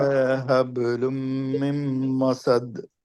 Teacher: حبل ہا ہے، با پر قلقلہ ہوگا، لم میں غنہ ہوگا، مم میں غنہ ہوگا، مسد في دال پر قلقلہ ہوگا